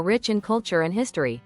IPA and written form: rɪtʃ ɪn ˈkʌl.tʃər ənd ˈhɪs.tər.i (Rich in culture and history)